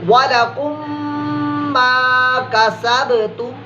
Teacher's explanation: ये गुन्ना भी ऐसे ही होगा जैसे मीम मुशद्दद का गुन्ना आपने किया था, यानी होंठों से, होंठ बंद करके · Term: इदगाम शफ़वी